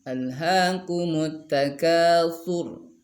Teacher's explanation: ra-nya di situ karena sebelumnya harakat dhammah, nah maka ketika disukunkan maka dibaca tafkhim, alhaakumut takatsur, seperti itu.